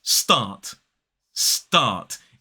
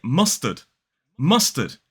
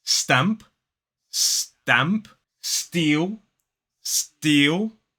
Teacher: when it comes after a s sound for many native speakers that affects the T the unaspirated T to sound more like a d